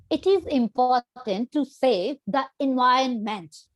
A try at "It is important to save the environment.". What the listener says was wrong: So even you did not feel it, आपने important पे भी stress किया था.